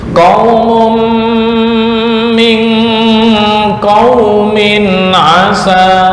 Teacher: Qaumun min, tanwin bertemu min, bacaan idgham di gunnah, ditahan ya, ditahan 2 sampai 3 ketukan